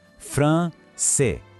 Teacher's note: Aqui a gente tem duas das nossas regras. A vogal nasal AN e, de novo, o C com som de S.